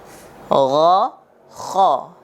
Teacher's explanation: Kemudian yang ketiga atau tempat yang ketiga dari tenggorokan yaitu bagian atas tenggorokan. Nah, bagian atas tenggorokan ini ada dua huruf. Yang pertama huruf gha dan huruf kha. Jadi tempat keluarnya sama.